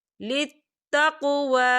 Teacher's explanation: واؤ کے اوپر کھڑی حرکات ہے، تو ہم اسے 2 یا 3 حرکت کے برابر کھینچے پڑھیں گے